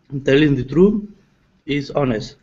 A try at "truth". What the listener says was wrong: So you need to pronounce the TH. Truth. Do you know how to do the TH sound?